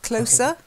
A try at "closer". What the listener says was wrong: Yeah, you need to work on that Z. Closer, yeah. It's soft, like soft. Closer. Soft.